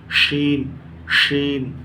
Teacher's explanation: بڑی شین کا مخرج بہت آسان ہے، زبان کا درمیانی حصہ اور اوپر کا تالو